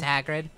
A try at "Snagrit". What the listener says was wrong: Snagrit. Well, no, it's Snagrit with a hard T. Snagrit.